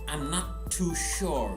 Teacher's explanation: there is only one t sound not two okay you don't need to say not to also you can